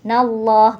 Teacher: lam jalalah pada lafaz Allah dibaca tebal atau tafkhim karena didahului oleh na berharakat fathah jadi bacanya tebal ya nallah gitu ya Innallaha yuhibbadzi bulla Nah